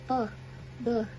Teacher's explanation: Yang pertama, teman-teman, kita mulai dari yang bilabial. Jadi cara bilangnya itu sedikit ditahan gitu di kedua bibir, lalu kita bilang contohnya seperti p, b.